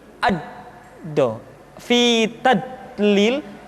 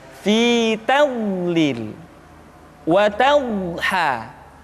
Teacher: Di antara sifat yang menonjol pada pengucapan huruf do adalah sifat al-istitalah, yaitu suara kita memanjang dan terdengar lembut suaranya ketika diucapkan. Tidak diucapkan seperti ini, ad-do, fi tadlil, tapi diucapkan dengan suara yang lembut, memanjang suara kita.